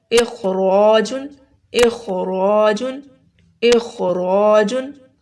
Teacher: اس میں خو اور رو دونوں موٹے پڑھے جائیں گے